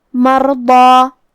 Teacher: ہم حرف الضاد کو اور مد الف کو دونوں کو تفخیم سے مطلب بھاری آواز میں پڑھیں گے